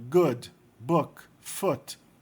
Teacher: O ditongo escrito O, geralmente é pronunciado como U. É um U abafado